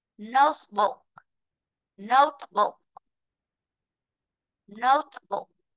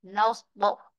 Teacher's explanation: Ghép lại là thành trọng âm rơi vị trí thứ nhất.